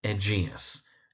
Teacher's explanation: it's Aegeus, emphasis on the second syllable